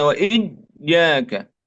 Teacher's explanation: Tidak boleh berlebihan ketika tasydid sampai menyerupai huruf jim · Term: huruf ya